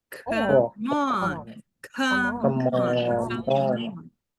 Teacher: Esse E não tem som de nada. Você vai juntar o M com o O.